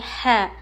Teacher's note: ح حلق کے بیچ کے حصے سے ح ادا ہوتا ہے. ح پر زبر ہے نہیں کھینچیں گے.